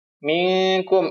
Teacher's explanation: nun sukun bertemu dengan huruf k ya maka bacanya dengung ditahan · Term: ikhfa